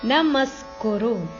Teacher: ಮ ಮೇಲೆ ಆಘಾತ ಇದೆ